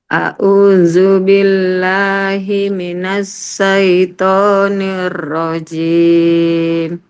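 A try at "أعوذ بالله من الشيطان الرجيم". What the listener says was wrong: Coba shin-nya ditebal lagi sedikit. Syai.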